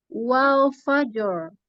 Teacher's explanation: Lamnya tipis. Wal jangan ikut tebal semua.